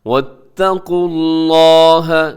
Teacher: لفظ اللہ سے پہلے پیش ہے تو اسے آپ نے موٹا پڑھنا ہے